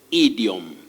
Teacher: at the beginning of that word, letter I takes the short or pure vowel sound E